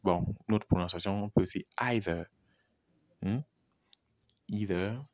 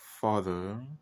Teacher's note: La plupart des mots en anglais, lorsque le TH est au milieu du mot, se prononcent avec le voice sound, c'est-à-dire le son émis lorsque on a lorsqu'on émet le son, on a une vibration au niveau de la gorge.